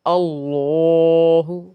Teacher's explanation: کھڑا زبر ہے لمبا بھی کریں گے